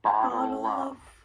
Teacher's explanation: We can link that dark L in bottle with the beginning vowel sound in of. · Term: linking